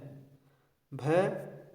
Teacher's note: भ स घोष भी है और महाप्राण भी है।